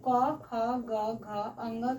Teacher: वर्णों के उच्चारण स्थान में पहला है कंठ। कंठ से हमारा अ, आ और क वर्ग यानी क, ख, ग, घ, अ ङ का उच्चारण होता है। जिसे हम कंठ वर्ण कहते हैं।